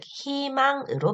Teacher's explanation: 자음을 첫 소리로 가지고 있는 음절의 의는 이로 발음합니다. 예를 들면 희망 같은 단어를 생각해보면 히읗으로 시작을 하죠.